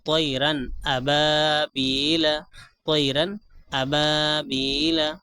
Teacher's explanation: آواز کو ناک میں نہیں لے کر جائیں گے بلکہ جلد ادا کریں گے، خوب ظاہر کر کے جلد ادا کریں گے۔ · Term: اظہار